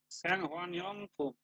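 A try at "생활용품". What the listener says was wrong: স্যাংহোয়া রিয়ং ফুম। স্যাংহোয়া রিয়ং, এই রিওলটা কোথায় যাবে? এখানে যে উচ্চারণ হবে স্যাংহোয়া রিয়ং ফুম।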